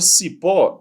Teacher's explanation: A palavra cipó, ela tem sílaba tônica no pó.